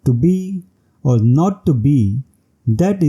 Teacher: the pattern consists of alternating unstressed and stressed syllables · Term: emic pentameter